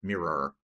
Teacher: esse O ele não tem o som de O, né? Ele tem esse som do schwa aqui, mirror, esse som de ele às vezes é até oculto, a ponto que é um R mais prolongado.